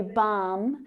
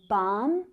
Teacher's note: we would say balm with a silent l so a lot like almond